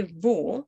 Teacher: w is not pronounced like the english were but it's pronounced it's called labiodental which means your upper teeth need to touch your lower lip